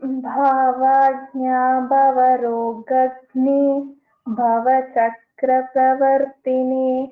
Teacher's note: So this ಭ ಅಂಡ್ ಘ ಅಂಡ್ ಭ are all ಮಹಾಪ್ರಾಣಾಕ್ಷರಸ್ so ವಿ have to put little more stress · So this bha and gha and bha are all Mahapranakshara. So we have to put little more stress.